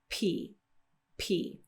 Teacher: this is a voiceless sound p P we have a nice little Pop there's no vibration coming from the throat